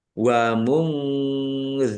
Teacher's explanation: Nun sukun bertemu dengan huruf dzal, bacaan ikhfa, dibaca samar-samar.